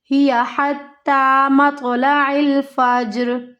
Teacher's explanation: مطلع الفجر، فجر، را یہاں پہ موٹی پڑھی جائے گی کیونکہ را ساکن ہو جائے گی، را ساکن سے پیچھے زبر کی حرکت ہے